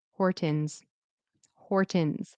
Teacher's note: Make sure that you are pronouncing the N and the S, which is like a Z.